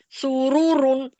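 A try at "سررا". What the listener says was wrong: رو نہیں را ساکن کریں گے. ہاں را کو را سے کرنا ہے. پہلے والی بیچ والی را سے آخر والی کو کریں. بیچ والی را سے آخر والی کو کریں.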